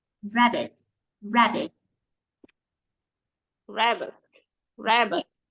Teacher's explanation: Chị sẽ giúp em nhấn mạnh trọng âm là ra.